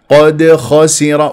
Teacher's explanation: القاف مفخمه مرتبه ثانيه مفتوحه لا تقول قود لا تكور الشفاه الدال ساكنه مقلقله في وسط الكلام